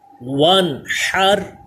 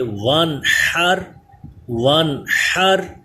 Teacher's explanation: جب اس کے ہجے کریں گے تو واو نون زبر ون، الف کا نام نہیں لیں گے. ون حر، حا پہ حلق کے درمیان والے حصے سے سانس کی آواز بھی پیدا ہو اور نون میں غنہ بھی نہ ہو · حروف حلقی میں آتا ہے، تو کون سا قاعدہ ہوا نون ساکن پہ؟ اظہار، یعنی اس پہ غنہ نہیں کریں گے.